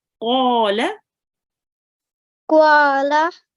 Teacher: Make sure to round your mouth when you say qa, and make sure the qaf comes from your throat.